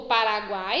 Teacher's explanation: o encontro de três sons vocálicos em uma mesma sílaba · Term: triton